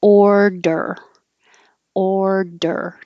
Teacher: my tongue starts curled back, ord, and up for the D and then back for the R, order, order.